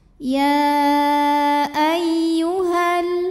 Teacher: kalau wasal madnya ini gugur h-nya dibaca pendek disebut dengan takhalus Bil hadfi Kenapa bisa gugur karena di sini